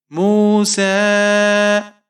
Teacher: سین کے اوپر کھڑی زبر ہے اور مد منفصل ہے، اسے آپ 3 الف تک کھینچ کر پڑھیں گے